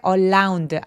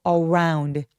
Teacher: 알 발음은 입술을 쭉 내밀고 around 이렇게 표현하면 정확한 소리가 납니다